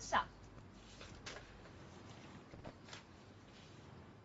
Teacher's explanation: But we don't use the teeth. We use the blade of the tongue to touch the alveolar ridge.